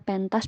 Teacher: yang berbeda misalnya deretan ente pada kata pentas bukan Cluster karena konsonan n melekat pada suku kata pen dan konsonan t melekat pada suku kata tas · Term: deretan konsonan